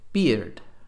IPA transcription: bɪrd